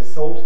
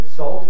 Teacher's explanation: some people say salt, vowel of thought, plus L. Others say salt, vowel of lot, plus L.